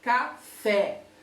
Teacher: na palavra café, por exemplo, a sílaba mais forte, obviamente, é o fé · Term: sílaba tônica